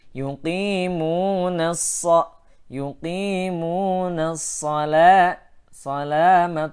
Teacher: Ya, sa didahului oleh alif lam, maka alif lamnya adalah alif lam syamsiyah. Maka bunyi nun pada yuqimuna langsung masuk kepada sad